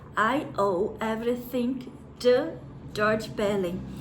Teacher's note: Esse to, por ter um som nasal antes dele, esse T, ele soa como se fosse um sonzinho de D. Parece um D.